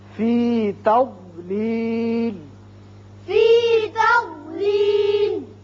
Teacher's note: ضاد پر پڑھا جاتا ہے اور زبان کی کروٹ اور اوپر والے بائیں طرف کی جو داڑیں ہیں ان کے ساتھ لگتی ہے تو ضاد ادا ہوتا ہے، زواد نہیں ہے۔